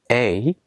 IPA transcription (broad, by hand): eɪ